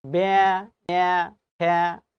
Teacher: প্রত্যেকটা জায়গায় একার উচ্চারণ হয়ে গেছে ইয়ার মতো